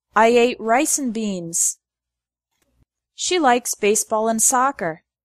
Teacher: The word and often becomes n.